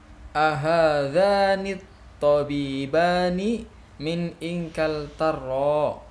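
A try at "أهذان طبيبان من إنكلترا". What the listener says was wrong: Ya, ini pertanyaan. Intonasinya intonasi pertanyaan. Ahadzani tabibani min inkal tarra gitu.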